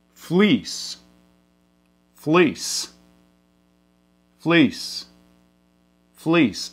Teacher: you are going to mid-centralize it which means you're kind of schwa it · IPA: i̽